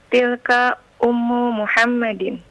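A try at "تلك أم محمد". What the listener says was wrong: Naam. Tilka ummu Muhammadin. Sahih.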